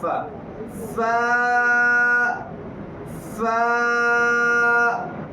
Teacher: اوپر والے جو دانت ہے جن کو ثنائے علیہ کہتے ہیں، نیچے والے ہونٹ کے جو اندرونی حصہ اس میں لگے گا